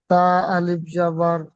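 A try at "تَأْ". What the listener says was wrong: তা আলিফ, তা আলিফ জবর বলে না, তা, তা হামজা জবর তা। আলিফের উপরে হামজা আসলে তখন একটু ঝাটকা দেবেন, তা হামজা জবর তা।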